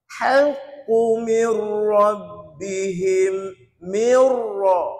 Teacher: Ra sabdu pada atas, tebal, masuk je tebal. Dia tak tengok huruf sebelum ni pada apa.